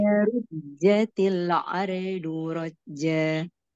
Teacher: Mengenai jim tidak perlu keluar udara.